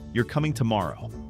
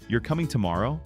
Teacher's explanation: Consider the sentence, "You're coming tomorrow." With falling intonation, it functions as a statement. With rising intonation, it becomes a question, "You're coming tomorrow?" The words remain the same, but the meaning changes through intonation alone.